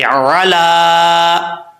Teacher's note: لام کے اوپر کھڑا زبر ہے، ایک الف کی مقدار اس کو لمبا کریں گے،